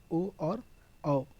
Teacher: ओष्ठ और कंठ इन दोनों से ही उच्चारण ध्वनि होती है, ओ और औ, इनको ओष्ठ कंठ की श्रेणी में रखा गया है।